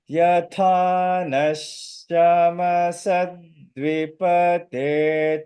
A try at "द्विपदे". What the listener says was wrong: not dvipate, dvipade. And you know why it is not pate? It is pade.